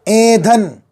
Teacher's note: ایندھن نہیں، نون نہیں ہے، نون گننا ہے۔ آواز ناک میں جائے گی۔ ایندھن، دال 2 چشمی دھا۔